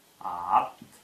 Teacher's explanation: Что значит фарингализованный? При произношении фарингализованно согласных происходит некоторое напряжение мышц глотки. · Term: фарингализованные